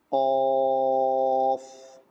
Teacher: غین اور قوف دونوں کے نکلنے کی جگہ ایک ہی ہے، جہاں سے غین نکلتا ہے ابتدائی حلق سے، وہیں سے ہی قوف نکلے گا